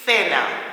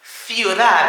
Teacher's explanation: It's almost a TH. It is a TH sound in Spanish from Spain anyway.